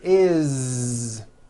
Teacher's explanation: that it's spelled with an S it's never is unvoiced never it's always is with a voiced Z